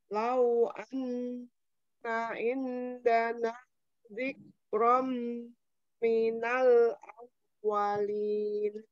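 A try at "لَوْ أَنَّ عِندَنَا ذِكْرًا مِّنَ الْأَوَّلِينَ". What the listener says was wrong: Ya, mau hamusnya tambah lagi. Zikram, zikram, ya.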